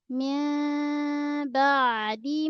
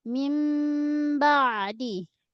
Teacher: Kalau nun bertemu dengan mim berlaku hukum iqlab. Boleh baca dengan dua cara iaitu renggang ataupun disebut dengan furjah ataupun rapat. Rapat dengan ringan tidak mengetam.